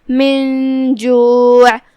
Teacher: جیم حروف الاخفاء میں سے ہے تو ہم نون کو بغیر ظاہر کیے ہوئے لیکن غنہ کے ساتھ یہ حکم کو ادا کریں گے